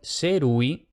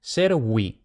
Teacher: En latín tenemos dos fonemas, U vocálico, como en serui, yo entrelacé o tejí, y el semiconsonántico, servi, siervos.